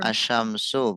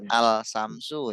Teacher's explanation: melebur masuk ke syin melebur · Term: idgham syamsiyah